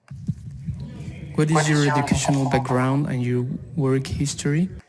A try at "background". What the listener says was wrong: Notice that word background. When you have those compound words there, I would put more stress on the first word, not the second.